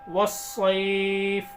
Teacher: واو کو سواد میں ملائیں گے ڈائریکٹ، الف اور لام نہیں پڑھا جائے گا